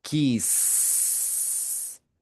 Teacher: Fíjense que la s no vibra.